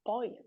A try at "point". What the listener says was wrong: point. Point ya. Pakai T ya, ada T-nya.